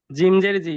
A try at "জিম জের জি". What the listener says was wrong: জিমজের জি বলা যাবে না, জিমটা শক্ত করে, জিমজের জি।